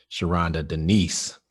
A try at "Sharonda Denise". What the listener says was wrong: It's not Denise. It's nice. That's how she told me to pronounce it.